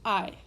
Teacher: where you're combining the two, the ah and the e sound, so it's I.